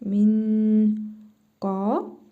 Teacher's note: Sonra qaf hərfi gəlib. İhva qaydasına görə nun hərfini burnumuzda tələffüz edərək bir əlif miqdarı uzadırıq.